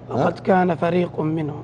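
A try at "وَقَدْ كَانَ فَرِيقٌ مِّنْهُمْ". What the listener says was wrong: المواضع الغنن كلها رايحه، حاول انك تعتني فيها والمدود نفس الكلام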